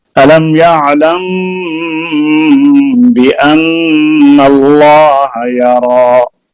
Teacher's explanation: میم ساکن کے بعد با آ جائے تو اس میں اخفاء ہوتا ہے، اخفاء شفوی